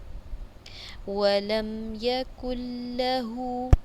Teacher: ولم میم ساکنہ ہے لیکن یہاں پر غنہ نہیں ہے